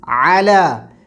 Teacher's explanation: عین ہے، الا نہیں، الا نہیں، علا، حلق کے درمیانی حصے سے